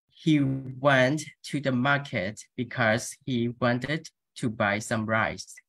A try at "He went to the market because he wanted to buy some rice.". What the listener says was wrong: Fantastic. Fantastic. Your pronunciation is almost as good as your dancing.